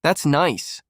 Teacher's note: When you mean it, your tone rises warmly.